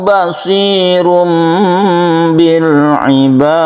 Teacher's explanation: Basirum ada iklab di sini, tanwin bertemu dengan ba menjadi mem suaranya